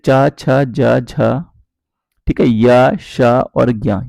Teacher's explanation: ये तालु से बोले जाते हैं। तालु दोस्तों हमारे जो मुख का यहां से बोला जाता है, ये वाला हिस्सा होता है दोस्तों, यहां से बोला जाता है तालु से।